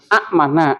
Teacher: Hamzah ketemu Hamzah sukun maka dibaca panjang dipanjangkan